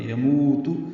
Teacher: مو واو مدہ ہے، 2 حرکات لمبا ہے